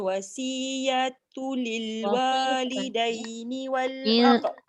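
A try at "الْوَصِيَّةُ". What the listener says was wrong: dekat wasi tu tebal sikit. Walaupun dia berbaris kasrah. In taraka khairanil wasiyatu lil wasi.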